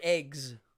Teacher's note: standard American dialect, if it's a voiced consonant, G, the S goes voiced. Eggs.